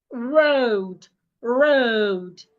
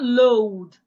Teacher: I'm rolling my tongue. The tip of my tongue rolls backward.